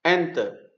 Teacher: thì n là đọc mạnh, tức là dấu trọng âm rơi vào âm tiết n